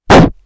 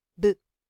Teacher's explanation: Esto se ve, por ejemplo, en el primer par bilabial explosivo u oclusivo, que es el caso de P, donde vemos que las cuerdas vocales no vibran, y B, donde vemos que las cuerdas vocales sí vibran